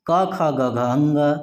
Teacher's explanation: क वर्ग के वर्णों का उच्चारण करेंगे क ख ग घ अंग, तो यह हमारी ध्वनि कंठ से आएगी। इसका उच्चारण स्थान कंठ है।